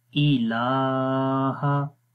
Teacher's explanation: لام کے اوپر کھڑی زبر ہے، اس کو 1 الف کے برابر اس کو بھی لمبا کریں گے